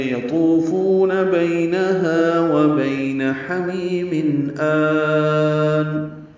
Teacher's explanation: حمیم میں ہا وسط حلق سے ادا کریں گے